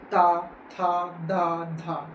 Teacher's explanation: अग्र भाग हमारे ऊपर के दांतो को स्पर्श करता है। दांतों को स्पर्श करता है। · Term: दंतीय व्यंजन